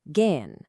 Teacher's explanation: an H that comes after a vowel is almost always silent. Its only job is to make the vowel before it long and drawn out